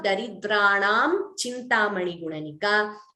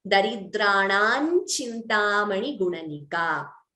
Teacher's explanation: the Anuswara followed by Cha gets replaced by the Anunasika of Chavarga. So instead of Daridranam Chintamani Gunanika, we could chant it as Daridranan Chintamani Gunanika.